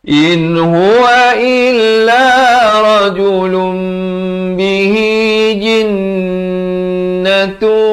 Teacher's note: Ini sebenarnya sama saja, ya. Tapi kena tukarlah daripada bunyi rajulun kepada rajulum, nun kepada mim, ya. In huwa illa rajulun bihi jinnatu. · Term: hukum iqlab